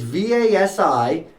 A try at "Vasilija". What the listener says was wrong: No. Vasilija. So the J is silent. You wouldn't be the first. But J in Serbia is pronounced as Y, so it's a Y sound.